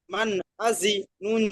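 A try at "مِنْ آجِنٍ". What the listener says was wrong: আজি টান দিলেন কেন? ওখানে টান হবে কি?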